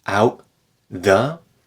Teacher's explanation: the window here out the we connect that sound together and you could think of it as a glottal stop plus TH